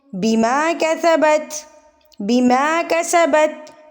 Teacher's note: سین، سیٹی آئے گی اس میں، کیسا نہیں پڑھنا، سین پڑھیں گے۔